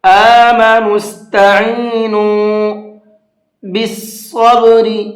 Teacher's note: صاد کو پر کر کے پڑھیں گے